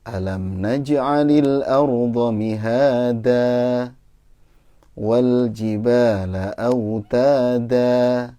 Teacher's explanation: Jangan langsung ditutup mulutnya, nanti jadi ada mim.